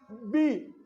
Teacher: बी शुरू में देखें पहले होंठ आपके क्या हो गए, बंद हो गए ना, तो पहली कंडीशन ही पूरी नहीं हो रही, तो लिहाजा जो बी है वो आपका क्या हुआ, कॉन्सोनेंट में आ जाए।